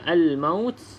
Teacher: alif lam qamariah lam yang ada tanda mati maka kita baca dengan jelas huruf lam tersebut